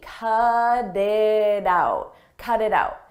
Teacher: In American English, when a T comes between vowels, we change that to a d, a very soft D.